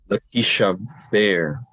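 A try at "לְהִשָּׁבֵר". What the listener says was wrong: Lishaver. The dagesh is in the first radical, not in the second. Lishaver. Likanea, liganev, lishaver, lishamer, lishaver.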